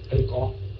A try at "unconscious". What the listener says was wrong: Không phải con nha, không phải con, không phải con. Chữ C đọc thành chữ K đó. Yeah, unconscious.